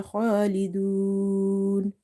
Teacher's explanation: So here in this word khalidun, kha is heavy because it's from the musta'aliya letters.